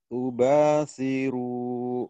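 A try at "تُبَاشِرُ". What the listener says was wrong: Shin. Tubashiru.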